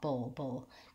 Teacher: the bull is kind of like a schwa, kind of like bull, but very short on the vowel, bull, going right from the B to the lifted dark L. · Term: syllabic L